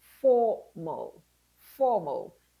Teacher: Simply take away the a, bring the m and the l together